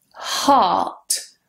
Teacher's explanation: in British English, we don't pronounce the R. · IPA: /hɑ:t/